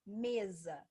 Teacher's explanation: Mesa se escreve com S, mas tem um som de Z.